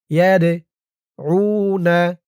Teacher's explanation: দালটা কলকলার হরফ, ধাক্কা দিয়ে পড়তে হবে।